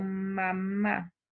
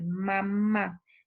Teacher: Las nasales para pronunciar este sonido nasal, vamos a notar una oclusión total de la cavidad oral y el aire va a salir a través de la nariz.